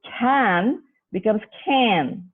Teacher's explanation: you there is a assimilation but only in one characteristic because the vowel has only taken on the nasalization aspect from the nasal sound hence this is partial regressive assimilation again the second sound is